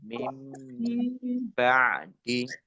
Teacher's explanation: nun sukun bertemu dengan huruf ba, bacaan iqlab. Dibaca membalik, nunnya dibaca mim.